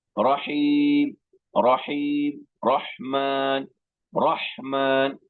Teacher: رحمان اور رحیم میں ہا کی آواز حلق کے درمیان سے ادا ہوتی ہے